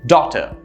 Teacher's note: is daughter notice how the stresses in the first syllable and the second syllable sort of tapers down and is very soft